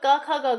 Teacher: क, ख, ग, घ जिसमें आते हैं वो आपके हो जाएंगे कंठ ध्वनियां